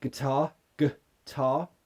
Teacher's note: it's an R not it's not get er it's guitar yeah the first syllable is the weak form and that has a schwa